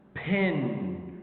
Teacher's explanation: Pin, aspiration. So if we got like the p sound at the beginning of the word, it could give aspiration.